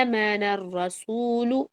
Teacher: آمن الرسول میں اے کو کھینچنا ہے اور وہ باریک پڑھنا ہے آپ نے. آ نہیں بولنا، آمن الرسول نہیں بولنا، آمن الرسول، رو موٹا ہے.